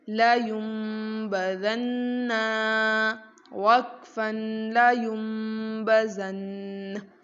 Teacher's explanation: نون ساکن ہے، اس کے بعد با موجود ہے، تو ہم نے اس نون کو میم سے بدل دیا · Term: اقلاب